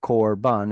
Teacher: it's a closed syllable and it's unstressed. So it's a short O sound